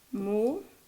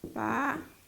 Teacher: ¿Dónde lleva la fuerza? En la sílaba antepenúltima. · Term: palabras esdrújulas